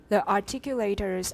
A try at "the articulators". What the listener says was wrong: the. No, that's an L. We don't want L. We want the.